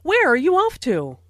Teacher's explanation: Notice the falling intonation since this is an information question, not a yes no question